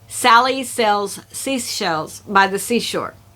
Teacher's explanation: This is where neighboring words make a hissing or whooshing sound as they repeat. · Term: Sibilance